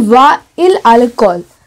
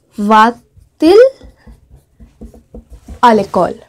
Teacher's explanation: whenever two vowels come together like this, and especially in inversion, we add a T between them.